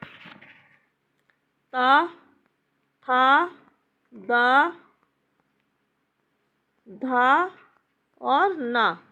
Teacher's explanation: जिसका उच्चारण ऊपर के दांतों पर जीभ लगाने से होता है उसे दंत कहते हैं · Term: दंत व्यंजन